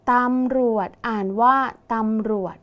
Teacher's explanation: มีจจานเป็นตัวสะกดออกเสียงพยัญชนะท้ายเหมือนดเด็ก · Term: แม่กด